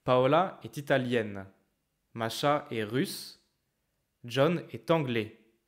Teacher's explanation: And then there's a small break. And for the very last one, the tone goes down.